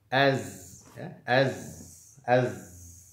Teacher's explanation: dia punya sifat ya sofir, ada bunyi desis ya, seperti huruf sod, seperti huruf sin ya. Ada 3 huruf ini. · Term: huruf zai